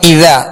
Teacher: اذا جاء نصر اللہ, یا اذا شروع میں حمزہ ہے, اس کو سختی سے پڑھیں گے. اذا, ذال کو نرمی کے ساتھ ادا کریں گے, ذال کے آگے الف مدہ ہے لہذا ایک الف کی مقدار کھینچ کر ادا کریں گے